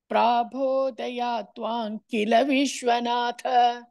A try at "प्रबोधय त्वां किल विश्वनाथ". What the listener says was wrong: पर्या नो दीर्घ इसे प्राबोधय त्वां किल विश्वनाथ।